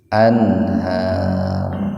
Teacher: rohnya disukun dan dibaca tafkhim, disukun dan dibaca tebal gitu. Karena huruf ro sebelumnya ada huruf fathah.